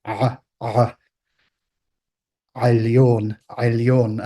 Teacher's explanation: Like I said in the video in question, the realization of this sound varies a bit throughout modern languages in the Semitic family that have the sound to this day. You can hear it as a pure pharyngeal, actually approximant, which is a sort of gulpy sound.